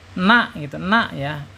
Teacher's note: ujung lidah ya, ujung lidah menyentuh langit-langit yang depan ya, hampir berdekatan dengan huruf lam ya. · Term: huruf nun